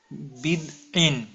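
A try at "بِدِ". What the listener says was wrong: ইন নাই, এখানে শুধু এক জের আছে। বিদ আই, বিদ আই, দোয়া এটা বিদ আই। বিদ না, দদের মধ্যে তো কলকলা নাই, দালের মধ্যে কলকলা। বিদ আই, আই।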